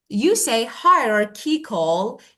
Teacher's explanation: You move the stress to the second part.